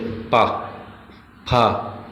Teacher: ओठ आपस में मिल जाए उसे बोलते हैं ओष्ठ · ओष्ठ मतलब जो जिसका उच्चारण करने से ओंठ आपस में मिले, पा, फा। अगर हम बिना ओंठ को मिलाए इन वर्ड को बोलेंगे तो नहीं बोल पाएंगे।